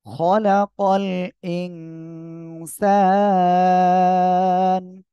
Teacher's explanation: নুন সাকিন, এরপরে ইকফার করে সিন আসছে, নাকের ভিতরে নিয়ে গুণনা করতে হবে গোপন করে।